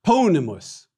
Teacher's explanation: short I in the second to the last syllable